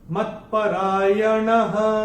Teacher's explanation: और चौथे चरण की समाप्ति पे जो विसर्ग हमको दिखाई दे रहा है, विसर्ग का उच्चारण चरण की समाप्ति पे केवल और केवल ह ही होगा।